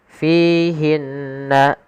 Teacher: alirkan nafas ketika melafalkan huruf fa, karena fa salah satu sifatnya adalah sifat hamas, mengalirnya nafas. Kesalahan yang terjadi menggantinya dengan huruf p, misalkan fihinna.